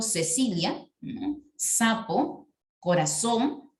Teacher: consistía en pronunciar la s la ce y la zeta de la misma manera